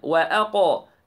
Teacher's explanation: the قاف قلقلة and heavy